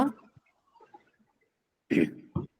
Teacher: Both of them are bilabial sounds. So two sounds originating from the same region cannot occur together.